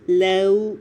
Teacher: نرمی کے ساتھ لام کو ادا کرتے ہوئے لین لیٹر آ رہا ہے، پورے ہونٹ گول کر دیں